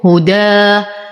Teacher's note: في المصحف نحاول ان نفرق بين الفتح والتقليل والاماله فالفتح هدى افتح فمي فتحه كافيه لساني مستفل لان الالف مرققه والصوت يخرج للخارج